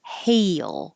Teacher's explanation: and Rises until you get to the E position and then slides down and up for an L hail so it's almost two syllables